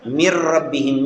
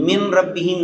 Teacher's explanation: میم اور را آپس میں مل جائیں گے، نون پڑھنے میں نہیں آئے گا